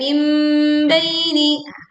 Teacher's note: Kita mengganti bunyi nun sukun dengan bunyi mim sukun. Jadi bukan min baini tetapi mim baini.